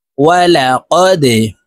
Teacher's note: ওয়াও জবর ওয়া লাম জবর লা ওয়ালা অফ দাল জবর কদে দালকে নিচের দিকে ধাবিত করে ধাক্কা দিয়ে উচ্চারণ করব কারণ দাল কলকলার হরফ